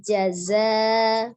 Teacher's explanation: Dan zai itu memiliki sifatnya safir, ada desisnya.